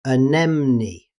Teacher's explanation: In British English, anemone. But in faster speech, the middle vowel can become very weak